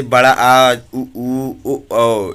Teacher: पश्च स्वर जीभ के पीछे का हिस्सा उठता है